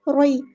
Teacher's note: یا ساکن سے پہلے زبر ہے تو مد لین ہو رہی ہے، نرمی سے اس کو موڑنا ہے